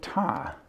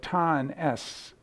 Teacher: you'll see that your tongue's about in the same place so there's a little tiny s that comes out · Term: a little burst